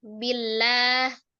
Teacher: Sebelumnya ada harokat kasrah maka dibaca tipis ya. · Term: Tarqiq